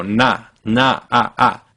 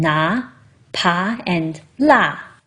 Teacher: that first vowel is ah with your tongue all the way forward in your mouth. If you stay on that first vowel, you don't move on to the uh in now, but instead you stay put.